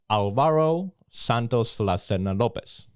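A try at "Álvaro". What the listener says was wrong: You almost say it right. Yeah, it's just like you put the accent in the second A, so you say Alvaro.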